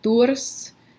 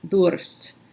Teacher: dialects where you will hear doors which is trill I guess it's alveolar trill it's a trill towards the front